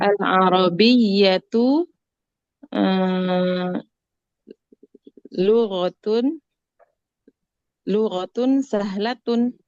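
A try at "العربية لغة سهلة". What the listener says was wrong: Masya Allah, al-Arabiyyah tuh lughatun sahlah.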